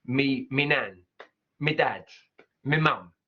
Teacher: So this is a great example again of a Cockney accent. In a Cockney accent, they're changing that sound, right? From my to me. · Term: me instead of my